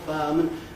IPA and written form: ˋfaəmən (fireman)